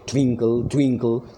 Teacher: तो ट्वी पे मैं फोर्स दे रहा हूँ, कल पे मैं नहीं दे रहा हूँ